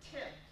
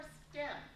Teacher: So with Tim, it's called aspirated. Stem, it's released. You can let the air flow out completely, but it's not aspirated. There isn't that puff of air.